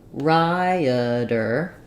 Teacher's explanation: Rioter, 3 syllables, and that first syllable is stressed.